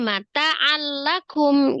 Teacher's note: ditasdidkan ke huruf lamnya tapi tidak digunahkan